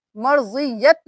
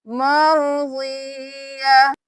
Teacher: اب یہاں پہ وقف ہو گیا تو ہم مرضیت نہیں کریں گے، یہاں پہ ہم صرف ہا کی آواز نکالیں گے، نہ ہی 2 زبر پڑھیں گے، نہ ہی تا کی آواز آئے گی۔ جب بھی یہ والی جو گول والی تا ہے اس پہ وقف ہوگا تو یہ تا کی آواز نہیں ہا میں بدل جائے گا تا، تو ہم یہاں پہ صرف ہا کی آواز نکالیں گے، مرضیہ۔